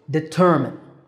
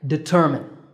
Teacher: is not determind there's no mind here it's D tur min with a stress on the second syllable